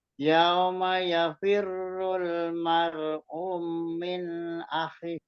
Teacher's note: Mar'umin akhi itu dipanjangkan, itu ada matobi'i.